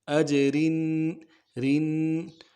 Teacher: را میں تنوین ہے، باریک کریں گے